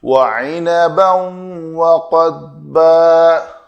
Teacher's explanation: ضاد ساکن ہے تو اس کی آواز میں کلکلہ نہیں آنا چاہیے